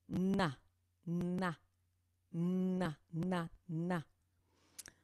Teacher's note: c'est un son ou une consonne nasale aussi. Il y a une partie de l'air qui sort un peu par le nez.